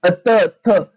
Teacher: त वर्गामध्ये दंत्य. बघा त थ, जीभ कुठं लागते, तुमची दाताला लागते, मग ते झालं दंत्य.